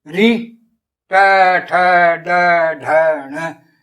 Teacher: फिर मूर्धन्य, री ट ठ ड ढ ण, ये मूर्धन्य, मूर्धा के जीभ लग रही है ऊपर।